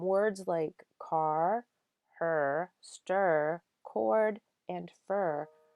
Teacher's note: in order to pronounce that r the vowel sound changes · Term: vowels followed by r